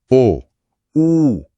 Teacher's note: इसमें तो जीभ का पिछला हिस्सा ऊपर की ओर उठ रहा है गले के पास।